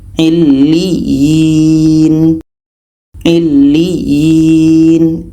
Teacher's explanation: Ini mat tamkin. Cara membacanya itu kita tekan, karena di sini ada tasydid, karena di sini ada 2 ya juga.